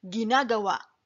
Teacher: when spoken slowly the word ginagawa has a glottal stop